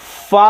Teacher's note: ऊपर के दांतों के किनारे और निचले होंठ के तर हिस्से से, भीगे हुए हिस्से से फा अदा होता है